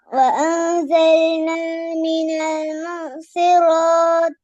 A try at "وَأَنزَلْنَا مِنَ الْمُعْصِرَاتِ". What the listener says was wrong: போதாதே. மினல் முஅசிராத் 2 செகண்ட், 2 அளவல்ல. கையை மூடி மறக்கிற துறக்கிற டைம் அல்ல. அப்படின்னா 4. கையை மூடி துறக்கிற டைம் என்ன 4. விளங்குதா? وأنزلنا من المعصرات